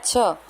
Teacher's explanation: छ दूसरा वर्ण है और छ का उच्चारण करते समय हवा ज्यादा मात्रा में निकलती है, तो वो है महाप्राण